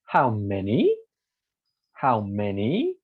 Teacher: rising and falling start from the top go down and go up again